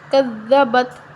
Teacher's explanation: یہاں دال نرم پڑھیں گے، کذبت، تا کو ہلانا نہیں ہے